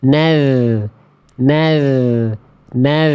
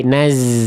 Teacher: ujung lidah bertemu ujung gigi seri atas